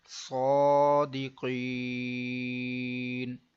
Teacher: صاد کھڑا زبر صو، دال زیر دی صادی، قاف یا زیر قی صادقی، نون زبر نا صادقین، گول دائرہ یہ وقف تام کی علامت ہے، یہاں پر وقف میں ہم زبر کو ساکن کریں گے، صادقین، لمبا اس لیے ہم نے کیا کیونکہ وقف کی وجہ سے نون ساکن ہوا اور اس سے پہلے یا مدہ تھا تو یہ مد عارض بن گئی، تو اس لیے ہم نے اس کو لمبا کر دیا۔